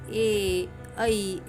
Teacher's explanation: उसके आगे जो है वो है कंठ तालव्य। कंठ और तालु दोनों से जिनका उच्चारण होता है, मतलब जब हम बोलते हैं तब अपने कंठ से आवाज़ निकलती है और अपनी जो जीवा है वो तालु को लगती है, जैसे कि ए ऐ ऐसे जो उच्चार होते हैं वह।